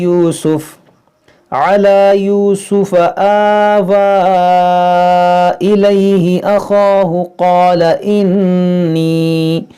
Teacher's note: تو الف مدہ کے بعد حمزہ دوسرے کلمے میں، تو یہ جو مد ہے مد منفصل ہے